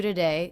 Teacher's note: this is most definitely a schwa so we're reducing this unstressed syllable to be the schwa